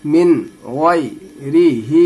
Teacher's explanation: ही में खड़ी जेर है, थोड़ा सा खींचा जाता है